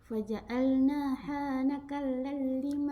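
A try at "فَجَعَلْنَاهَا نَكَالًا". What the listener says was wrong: Kan ini panjang. Naka.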